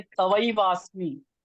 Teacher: तवई है, ता पूरा है, त्वा नहीं है